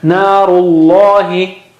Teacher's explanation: In that case, it is almost automatic, because ru makes your mouth round, lips round. So naturally, the lam that follows will be thicker.